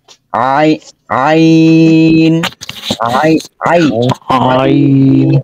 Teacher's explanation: গলার মধ্যখান থেকে এই আইন উচ্চারণ হবে